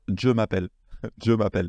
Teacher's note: quand le je est en début de phrase, en japonais, on le prononce avec un D